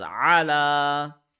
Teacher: lam has a standing fatah we will stretch it for one second so this is allah and similarly this is standing kasra and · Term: standing fatha